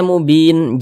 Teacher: Ini kita berhenti di huruf nun tidak dibaca panjang, nah, kita sukunkan, kita matikan sehingga dibaca mubin.